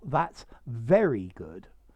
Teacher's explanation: the innuendo is that i'm not stressing the very